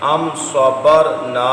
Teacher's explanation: را ساکن سے پہلے زبر ہو، را کو پر پڑھتے ہیں